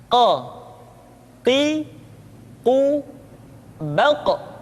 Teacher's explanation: Berikutnya pengucapan huruf qa. Huruf qaf diucapkan dengan cara menyentuhkan pangkal lidah kita dengan langit-langit bagian belakang.